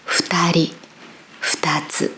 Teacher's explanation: So it's not fu or fu. It's halfway between fu and hu.